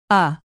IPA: ʌ